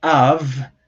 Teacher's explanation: when you are saying the word av, the first thing that occurs there is not the vowel a, but the glottal stop